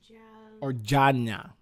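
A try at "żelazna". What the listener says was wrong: It's not ja.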